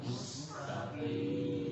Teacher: huruf qaf nanti jangan sampai ketebalan